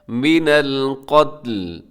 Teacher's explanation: وقف کرتے ہوئے لام کو ساکن کر دیں گے